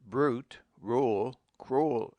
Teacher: When U comes after R it has a sound of oou as in brute rule cruel